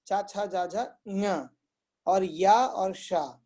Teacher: चवर्ग, चा, छा, जा, झा, ञ, और या और शा, इनका उच्चारण स्थान है, उत्पत्ति स्थान तालु, मतलब तालु पैलेट